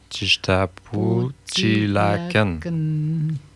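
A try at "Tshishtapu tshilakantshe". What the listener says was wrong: Hein, il manque des syllabes, des consonnes. Il manque le T. Il manque ITSH.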